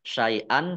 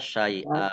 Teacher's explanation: Fathah tanwin alif dibaca karena wakob dibaca fathah ya, dibaca syai'an dibaca syai'a. Panjang 2 harokat namanya mat iwad. Jangan terlalu panjang ya.